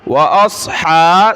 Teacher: صاد کو موٹا کیا، ہا کو گلے سے نکالا، میم کو لام کے ساتھ، با کو لام کے ساتھ ملائیں گے.